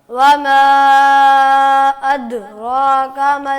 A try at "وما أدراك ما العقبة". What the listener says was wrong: آپ بڑے بہت زور سے زبان کو ہٹ کر رہے ہیں. زبان کو زور سے ہٹ نہ کریں, ذرا نرمی سے. ادراک ادراک. اور نرمی سے. چپکانا نہیں ہے زبان کو ساتھ ہی. اد.